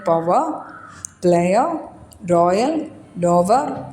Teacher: രീതിയിലൂടെ വവൽ അതിലൂടെ glide പോകുന്നുണ്ട്ദെൻ പവർ പ്ലയർ റോയൽ ഡോവർ ഇതൊക്കെ പറയുമ്പോൾ മൂന്ന് പൊസിഷനിലൂടെയാണ് അവിടെ വവൽ ഗ്ലൈഡ് ചെയ്തു പോകുന്നത് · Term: ട്രിഫതോസ്